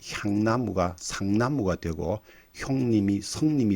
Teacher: 히읗 뒤에 이중모음이 오면 히읗은 시옷으로 바뀌고 이중모음은 단모음으로 바뀌는 규칙이 있습니다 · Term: 구개음화